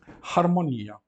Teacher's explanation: Aquele H do latim significa que a palavra tem uma ligeira aspiração.